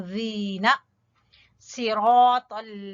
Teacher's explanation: जबान की नोक और ऊपर वाले दो दांतों के सिरे आपस में टकराएंगे